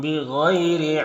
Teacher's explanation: یہاں پر یالین سے نرم آواز کے ساتھ جلد پڑھیں گے